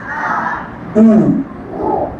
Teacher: আর আমরা যখন পেশের উচ্চারণ করব ঠোট গোলাকার থাকবে